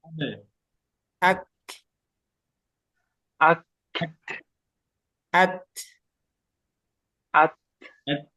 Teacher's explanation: setelah suaranya tertahan di ujung itu ada udara yang keluar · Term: Hamas